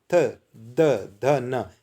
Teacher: जीभ कहाँ लग रही है? दांतों के निकट।